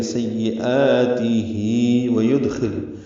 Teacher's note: دال ساکن پہ قلقلہ ہے، خا پر ہے، لام ساکن پہ اظہار ہے